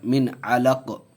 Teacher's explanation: یہاں جزم دے دیں گے قاف پر، تو یہ قلقلہ کا قاعدہ بھی ہو جائے گا